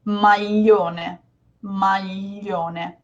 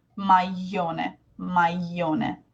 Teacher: with a certain regional accent, like Sicilian, this could become maglione, with a Y sound almost